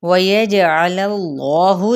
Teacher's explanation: जीम पे कलकला होगा, इसमें जलाला का लाम पुर पड़ा जाएगा